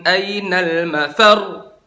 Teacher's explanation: Tapi kalau ada tasdid kayak mafar, angkat suaranya. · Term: naber